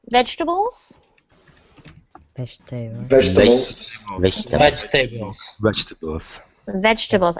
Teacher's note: do not pronounce the second e in the word